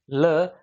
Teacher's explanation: पार्श्विक वर्ण से तात्पर्य है कि जब हम इसका उच्चारण करेंगे ल, तो आपके जो हवा का जो प्रवाह है, हवा मुख से जो निकलेगी, दोनों भागों से बराबर निकलती हुई आती है, इसलिए इन्हें पार्श्व वर्ण कहा गया है।